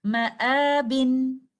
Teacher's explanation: الف مد سے پہلے ہمیں لیٹر حمزہ نظر آ رہا ہے، الف مد مد البدل کی کنڈیشنز میں ہے، 2 کاؤنٹس اسٹریچ کرتے ہوئے ہم اس لفظ کی ادائیگی اس طرح سے کریں گے، مآبن۔